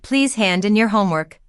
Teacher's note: the stress often lands on the second word, the preposition, even though normally we don't stress prepositions in English